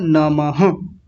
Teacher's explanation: विसर्ग का मतलब होता है ये आधे ह जैसी आवाज देते हैं। पूरे ह की आवाज नहीं आधे ह की आवाज।